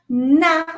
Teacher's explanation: you put the tip of your tongue in the alveolar · Na, notice that it's alveolar.